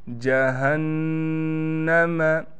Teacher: नून पर तशदीद होने की वजह से नून पर ठहराव के साथ गुन्ना किया जाएगा